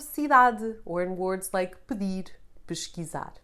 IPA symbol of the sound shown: ɨ